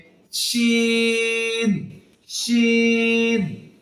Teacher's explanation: এ হরফটি জিহবার মাঝখান তার বরাবর উপরের তালুর সঙ্গে লেগে উচ্চারিত হবে